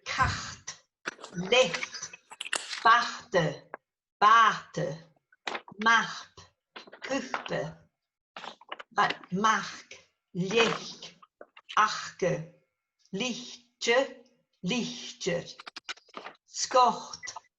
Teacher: Pre-aspiration or lenition comes before T, C, P. Like adding an itch sound.